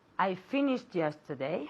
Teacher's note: we can even link The Sounds together finished yesterday because we have the T sound and then the Y